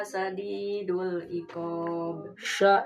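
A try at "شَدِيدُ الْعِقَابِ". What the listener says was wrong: Shin. Syadidul.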